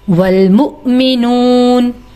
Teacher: والمؤمنون پہ حمزہ دیکھیں، میم واؤ پیش منہ نہیں یہاں پڑھنا، واؤ کے اوپر حمزہ ہے اور ہم یہاں پر حمزہ ہی کو پڑھیں گے، واؤ کو سکپ کر دیں گے، اور جب حمزہ پر جزم ہوتا ہے تو جھٹکا دیتے ہیں